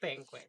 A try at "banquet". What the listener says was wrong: But she says banquet. But there's no D, and you're making it sound like there is.